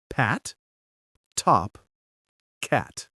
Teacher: Each one has that tiny burst of air.